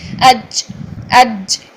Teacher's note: جیم میں جے کی ساؤنڈ پیدا ہونی چاہیے، چے کی ساؤنڈ پیدا نہیں ہونی چاہیے